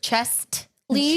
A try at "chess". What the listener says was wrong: No, not chess. Chess. You said chest. You said chest.